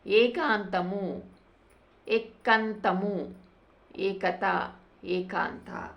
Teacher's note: ఇంకొకటి శ్వాస అనునాసిక వర్ణలోపము వచ్చేసరికి ఇక్కడ ఆ పదంలో ఉన్న అనునాసికం పోవటం అనేది జరుగుతుంది. ఇది అనునాసిక వర్ణలోపం